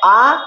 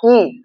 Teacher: আ বললে অনেকটাই মুখটা খুলছে আর ই বললে অল্প অল্প মুখটা খুলছে কিন্তু খুবই অল্প